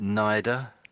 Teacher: you did the TH like a D again